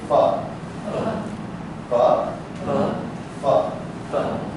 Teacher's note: when you say fa, you're putting your bottom lip up under your teeth, right? And dropping it down.